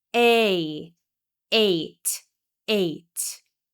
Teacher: This long A is really a diphthong, or a combination of 2 vowel sounds. It starts with E and it changes to I.